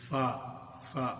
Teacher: تو اس میں پہلے ہے نیچے والا ہونٹ کا اندرونی حصہ اور اوپر والے دانتوں کے کنارے. نیچے والے ہونٹ کا اندرونی حصہ اور سامنے والے اوپر کے دانتوں کے کنارے. اس سے ایک حرف ادا ہوتا ہے اور وہ حرف ہے فا. تو یہ فا اس سے ادا ہوتا ہے.